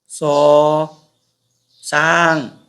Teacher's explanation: 舌尖齒齦擦音，發音時用舌尖底下齒背，舌尖靠近齒齦形成阻礙，令氣流從舌尖同齒齦之間摩擦成音